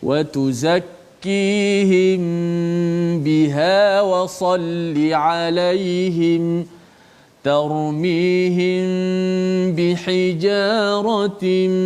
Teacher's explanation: Maka bila kita jumpa dalam Quran ada hukum mim mati bertemu dengan ba, kita kena bacanya secara ikhfa syafawi. Kita rapatkan kedua-dua bibir kita, dan seperti biasa hukum ikhfa syafawi ni kita kena panjangkan gunnah kita. Kalau baca lambat, bacaannya kiraan gunnah itu dilambatkan sedikitlah.